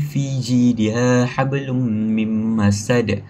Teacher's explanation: hablum mim dibaca dengan dengung, dan dipanjangkan pada 2 harakat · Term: idgham ma'al gunnah